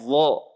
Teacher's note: Pangkal lidah naik ke langit-langit mulut.